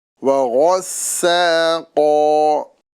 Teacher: सीन को बारीक और गन को पुर करना है